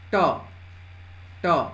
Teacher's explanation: आप मेरे साथ उच्चारित करके देखें। ट, ट, आपका जीभ मुड़ करके ऊपर तालु में चपक रहा होगा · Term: मूर्धन्य